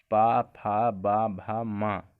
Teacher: फिर है पा वर्ग, पा, फा, बा, भा, मा। ये क्या है? ओष्ठ व्यंजन है।